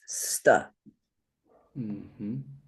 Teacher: the s and the t are one sound st with the automatic short uh attached but not between them. It's not sa, it's >> st. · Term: compound consonant